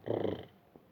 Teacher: the blade of the tongue taps several times against the teeth ridge, the sound produced is known as a trill